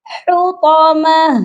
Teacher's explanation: ہا کی آواز سینے سے نہیں آئے گی, حطمہ درمیان والے حلق سے آئے گی